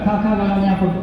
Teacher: ಕಂಠದಲ್ಲಿ ನಾಲಿಗೆಯನ್ನ touch ಮಾಡದೆ ಮಾಡಕ್ಕಾಗಲ್ಲ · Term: ಕಂಠಗಳು